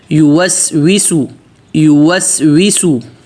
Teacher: یا پہ پیش ہے تو ہونٹ گول کریں اور آگے واو بالکل واضح